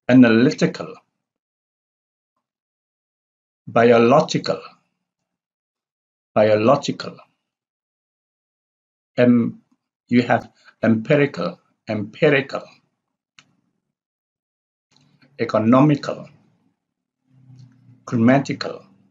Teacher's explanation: adjectives which ends with -ical. They have the primary stress on the antepenult syllable, antepenult syllable, or syllable from the penultimate is the second from the last, and antepenult is the third from the last.